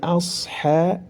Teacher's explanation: Kemudian juga lidahnya harus diangkat karena memiliki sifat isti'la. Setelah diangkat maka ditempelkan ke langit-langit karena memiliki sifat itbaq.